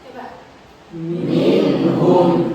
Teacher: Jadi tidak boleh didengungkan minhum. Jadi harus jelas ya. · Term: idhar